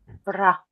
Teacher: And uh, I want to make a point about the ra. This is a very strong rolled R sound. And it's much more like I think the Russian R and the Spanish R.